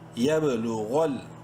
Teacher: یب لام پیش لوں، غین لام زبر غل، غین کو منہ بھر کے پڑھیں گے